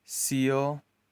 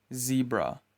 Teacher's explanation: You pronounce them by placing the blade of your tongue on your alveolar ridge and forcing air out of your mouth. S is voiceless. Z is voiced.